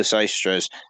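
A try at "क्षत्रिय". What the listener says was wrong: It's actually pronounced KSH, Kshatriyas.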